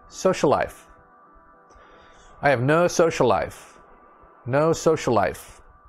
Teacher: we don't say the l twice